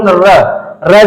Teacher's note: र जब बोलेंगे र तो ये जीभ आपका कैसा हो जा रहा है लुंठित हो जा रहा है